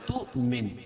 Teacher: اور ہم یہاں حمزہ جو ہے واو کی شکل میں ہے. واو ہے اس کے اوپر حمزہ اور جزم ہو تو وہاں جھٹکا ہوتا ہے. اور جہاں بھی جھٹکا ہوگا اس کے اوپر حمزہ لکھی ہو اس کے اوپر جزم ہونا ضروری ہے.